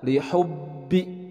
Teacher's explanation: ba bertasydid, penekanan di dalam huruf ba-nya karena ada tasydid double.